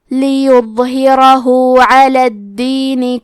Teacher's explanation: آخری میں ہا پہ الٹا پیش ہے، یہاں مد صلہ صغرا کو ظاہر کریں گے، لیظہرہ علی۔ کلمت الدین میں دال پہ تشدید ہے تو ہمیں 2 حرف کے برابر دال کو پڑھنا ہے